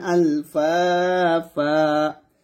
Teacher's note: ওয়াকফের অবস্থায় তানবিনে দুইটা জবর থাকার কারণে একটা জবর বাদ দিয়ে দিচ্ছি, আর একটা জবর স্থানে রেখে এক লিফ পরিমাণ টেনে পড়ছি